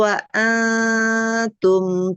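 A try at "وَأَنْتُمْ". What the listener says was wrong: Wa antum tipis lagi, enggak ang. Pangkal lidahnya jangan menempel. Wa antum.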